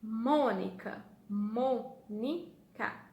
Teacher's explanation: Qual que fala mais forte? O mo, tá? Então, o mo é a nossa sílaba tônica.